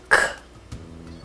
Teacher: A letra é G, seu som fonema é K, como em G, Gi. A língua recuada é um som surdo sem vibração das pregas vocais.